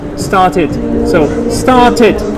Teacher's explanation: It now becomes two syllables, and you really need to say tid.